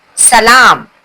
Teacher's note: सीन सीटी की आवाज से निकलती है। सीटी जैसी आवाज से हमें इसे पढ़ना पड़ता है।